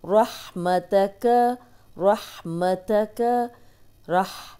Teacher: را کو موٹا پڑھیں گے. ہا کی آواز آئے گی.